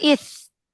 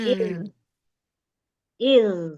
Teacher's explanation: huruf zal itu yang dialirkan suaranya, jangan nafasnya ya. Kalau nafasnya nanti yang keluar huruf sa.